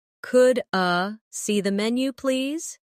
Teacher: In fast speech, could I sounds like could a